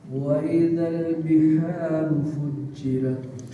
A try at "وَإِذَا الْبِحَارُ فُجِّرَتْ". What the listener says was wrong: فجرت، رت را موٹی ہے، فجرت.